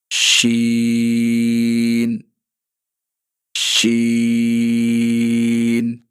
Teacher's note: زبان کے درمیان والے حصے کو جب ہم اوپر تالو کی طرف اٹھائیں گے تو وہاں سے باریک اور پھیلتی ہوئی آواز